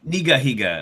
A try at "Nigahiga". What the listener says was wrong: Nigga Higa. There's more G's implied there than there actually is.